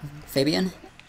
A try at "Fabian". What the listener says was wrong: Try to make a more single pronunciation. Fabian. Fabian. Don't pronounce the N too much. Just the sound A.